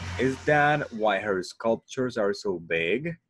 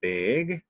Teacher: If you notice, we go like big, all the time goes up. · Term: yes/no questions